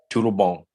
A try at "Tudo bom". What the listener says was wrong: Very good. Sounds much better.